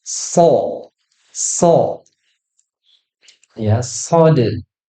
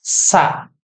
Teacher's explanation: Dengarnya tuh dia lebih tebal daripada sin. Padahal tempat keluarnya sama ya. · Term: sifat isti'la